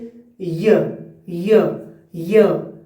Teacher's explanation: Palatal यानी कि जीभ के सिर को कठोर तालू से जोड़कर ध्वनि बनती है। जीभ के सिर को कठोर तालू यानी कि जोर से, जैसे य य।